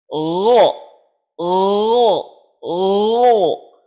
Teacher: Sifat-sifat yang pertama dari huruf ghain, sifat jahr. Huruf gha tidak memiliki aliran udara yang keluar.